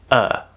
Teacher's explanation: this upside down v ipa symbol the uh is actually just the fully enunciated very clearly pronounced version of what we call the schwa sound in american english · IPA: /ʌ/